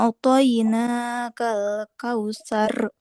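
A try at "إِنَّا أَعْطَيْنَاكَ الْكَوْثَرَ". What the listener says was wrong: Bedakan hamzah dan ainnya. Inna a'toina. A, hamzah, a. Kemudian ain. A'toinakal kautsar.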